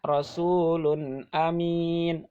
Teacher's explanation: Rasulun tanwin bertemu amin hamzah, jadi dibacanya tanpa gunnah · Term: idhar